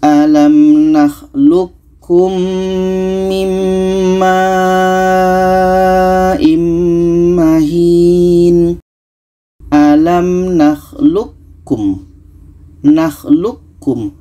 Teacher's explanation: Q ini kita masukkan ke ka Q ini tidak jadi qalqalahnya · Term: idgham mutaqaribain